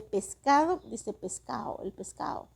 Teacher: la atenuación de la D intervocálica hasta desaparecer